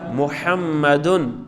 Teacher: دوسرا ہے خشکی والا حصہ، میم. جب ہم پڑھتے ہیں محمدن تو میم خشکی والے حصے سے ادا ہوتا ہے